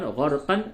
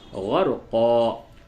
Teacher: ایسے تو ہجے میں آپ کہیں گے قاف دو زبر قن، غرقن، لیکن جب آپ یہاں پہ وقف کریں گے تو ہو جائے گا غرقا